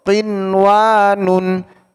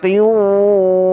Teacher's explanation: membaca dengan jelas, tidak perlu didengungkan lagi, tidak perlu diidghamkan lagi. Contoh, qinwanun, cukup dibaca qinwanun, tidak dibaca qiwanun, tidak pula dibaca qiwanun.